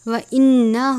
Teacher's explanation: نون مشدد پہ ہمیشہ غنہ کرتے ہیں یعنی آواز کو ناک میں لے کر جانا